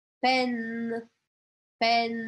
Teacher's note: Eu não vou falar o E no final.